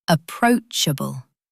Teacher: emphasis is on the second syllable.